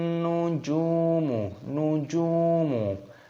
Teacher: Ada wawu sukunnya, maka jimnya dibaca panjang-panjangkan 2 ketukan saja.